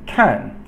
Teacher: kan, fourth tone, falling tone.